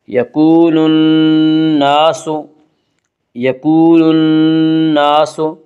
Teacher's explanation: نون مشدد غنہ ہوگا، غنہ کی مقدار 1 الف ہے۔ یکون الناس، یکون الناس، الف مدہ، الف ہمیشہ مدہ ہوتا ہے، الف سے پہلے ہمیشہ زبر ہوتا ہے، الف مدہ کو 1 الف کے برابر کھینچ کر پڑھیں گے۔